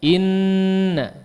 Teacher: huruf nun yang bertasydid pasti apa? Digunnahkan dengan gunnah yang panjang.